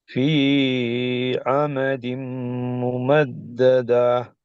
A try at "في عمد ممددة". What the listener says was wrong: அது ஏன் ஃபீ அது கூடுதலா நீட்டுப்படுது. ஒன் செகண்ட் போதும். அதுதான் ஃபீ அமதின்.